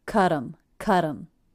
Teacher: because the T now comes between two vowels, I turned that T into a flap or a light D sound.